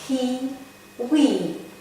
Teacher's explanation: quantitative reduction shortening of vowel sound in the unstressed position